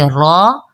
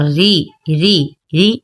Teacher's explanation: را اور رو موٹا اور ری ری ری باریک پڑھا جائے گا